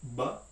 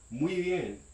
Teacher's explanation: The B sound in the word bien, which means well, right, is going to be a voiced labial stop, b. And that's going to be very different from the B letter in the sequence of words very well, muy bien.